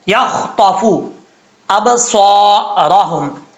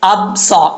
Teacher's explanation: حمزہ کے بعد جو با ہے، با ساکن ہے، یہاں پہ قلقلہ ہوگا